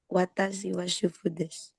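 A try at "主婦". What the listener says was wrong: Ya, bukan cupu ya. Kalau cupu orang Jakarta.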